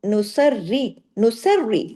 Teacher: سواد کو ہیوی اور را کو پھر باریک